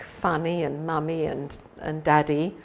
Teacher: pronunciation has changed a bit and so when we have words like funny and mommy and and daddy it ends up more like an e sound on the end so the the I has been elongated to e if we